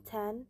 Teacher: when we say t in tan, the tongue touches the upper teeth